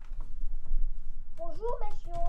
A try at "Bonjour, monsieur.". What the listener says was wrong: Oui, très bien, bravo.